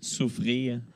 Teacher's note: le r final était très très léger donc il n'est pas comme le mien souffrir pour moi s'ouvrir